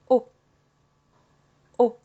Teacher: O is also quite similar to English, but a bit sharper, a bit shorter.